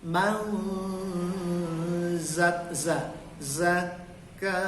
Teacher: nun mati habis itu ada huruf za, maka dia ikhfa. Man zakkaha, man, nya dilamain, dipanjangin, itu ikhfa.